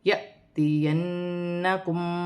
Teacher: الف پر جزم کی حرکت ہے، جھٹکے کے ساتھ پڑھا جائے گا